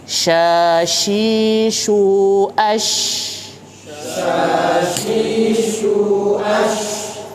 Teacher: huruf sya, hati-hati di tengah lidah, bukan di ujung, bukan di ujung. Kalau yang di ujung itu sa, huruf S yang biasa kita tahu, ya.